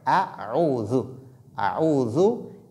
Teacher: la lettre hamza sort du fond de la gorge, aqsal halq, tandis que ayn sort du milieu de la gorge, qui est wasatul halq.